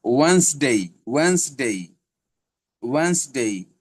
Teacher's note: ওয়েডনেসডে রে উচ্চারণ হবে ওয়েন্সডে, ওয়েন্সডে।